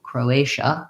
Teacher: I have my o vowel, and then my another tense a, and then the TIA says sh with a vowel schwa. Croatia, second syllable stress, so short, long, short.